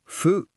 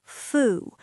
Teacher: It's like blowing out a candle. Foo. Your lips don't touch. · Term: foo sound